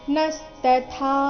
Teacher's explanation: ನಸ್ತಥಾ ನ ಮೇಲೆ ಆಘಾತ ಬರಬೇಕು